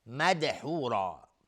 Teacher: مدحورا، دال اینجا قلقله میخواد